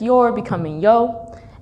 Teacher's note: there's a dropped R sound in words like you're becoming yo